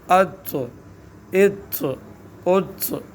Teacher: یعنی زبان اوپر کی طرف بھی اٹھے گی، منہ گول سا بھی ہوگا، اور حرف موٹا بھی ادا ہوگا، اور قلقلہ بھی ہوگا